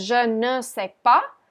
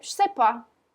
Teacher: the French have a way of eating their syllables, and here, instead of je ne sais pas, they'll say je sais pas